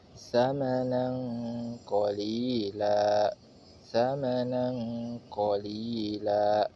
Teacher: Kalau tadi domahtain dan kasrohtain cukup disukunkan, maka kalau fatahtain memiliki hukum sendiri, yaitu membacanya dengan cara membunyikan lafal menjadi fathah dan dipanjang 2 harokat dan berubah menjadi mad iwad